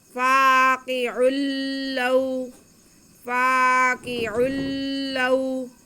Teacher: لام پہ زبر اور واو ساکن تو یہ واو لین ہو گئی، اسے بالکل نہیں کھینچنا۔